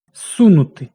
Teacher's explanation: С глухий, тому з оглушується, звучить як с, але пишемо префікс з.